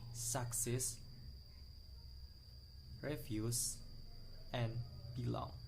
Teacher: consisting of two syllables that get pressure on the second syllables